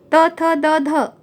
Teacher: जैसे हमने लिखा त थ द ध, तो त थ द ध अगर हम बोल रहे हैं तो हमारी जीभ सामने के दांत और तालू के बीच में स्पर्श कर रही है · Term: स्पर्श व्यंजन